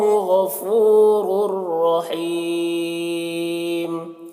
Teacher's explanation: را کو پر پڑھیں گے، را کے اوپر دو پیش کی تنوین ہے اور یہاں پر تنوین کے بعد را ہے حروف یرملون میں سے، تو تنوین کو را سے ملا کر بغیر غنہ کے پڑھیں گے، اس کو ادغام تام کہتے ہیں۔